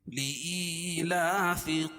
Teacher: یا ساکن سے پہلے زیر ہے اس لیے یا مدہ، اس کو ایک الف کے برابر کھینچ کے پڑھیں گے۔ لا کھڑا زبر قائم مقام الف مدہ کے، اس کو ایک الف کے برابر کھینچ کے پڑھیں گے۔